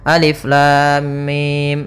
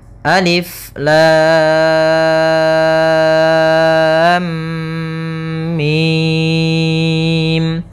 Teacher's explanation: en harakat enam ee panjangnya adalah 6 harakat cara membacanya adalah kita panjangkan dulu lamnya baru dimasukkan ke mimnya jangan lam langsung masuk mim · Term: mad lazim Harfi mutsaqal